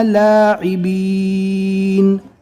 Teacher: لاعبین یہاں پر یا مدہ ہے، لیکن اس کو کیوں زیادہ کھینچیں گے؟ اس لیے کہ یہاں پر مد عارض وقفی ہوگا